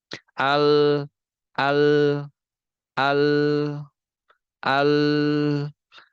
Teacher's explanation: Teman-teman bisa ngerasain kalau aliran suara pada lam itu pasti ke pinggir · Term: inhirof